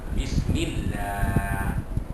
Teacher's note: Sebab huruf mim sebelum Allah itu berbaris di bawah. Apa-apa huruf berbaris bawah sebelum kalimah Allah, maka Allah itu dibaca tarqiq, dibaca tipis.